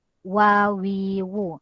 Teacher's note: Berkenaan bibir atas dan bibir bawah, cuma dia tidak berjumpa. Wawiwu. Dia tidaklah rapat macam huruf ba dan huruf mim.